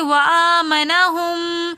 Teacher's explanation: میم ساکن کے بعد میم متحرک آ رہا ہے، تو مشدد میم ہونے کی وجہ سے یہاں پر ہم غنہ کر کے پڑھیں گے